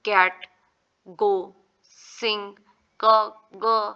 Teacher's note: this sounds are produced बाय back of the टंग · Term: वेलर